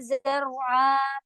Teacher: رو heavy ہوگا اور زر کی ساؤنڈ نہیں دیں گے